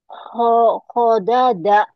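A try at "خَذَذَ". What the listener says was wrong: khodaza, khodaza tuh agak beda ya lidahnya kayak digigit yang ini. Dikit khodaza, khodaza.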